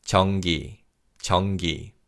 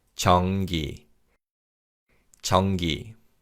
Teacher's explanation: When we say this word, 니은 받침 in 전 is pronounced as an 이응 sound, so it's 전기, 전기.